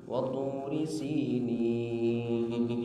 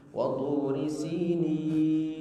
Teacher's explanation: tidak boleh keluar lewat hidung, harus semuanya di al-jauf